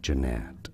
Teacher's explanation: Jeanette stress on the second syllable Jeanette